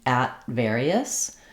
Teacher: I have a t followed by a consonant sound. So, I make that stop t